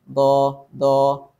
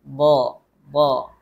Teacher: makhrajnya Sisi lidah kegeraham dan pangkal lidahnya naik